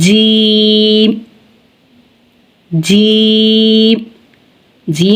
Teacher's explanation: जुबान का दरमियान जब तालू के दरमियान से मिलेगा तो जीम अदा होगा